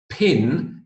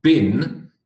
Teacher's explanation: the difference between pin and Bin is that you are voicing the b in bin